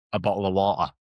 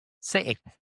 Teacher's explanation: you replace the t with the closure of your vocal cords, your vocal folds. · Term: glottle stop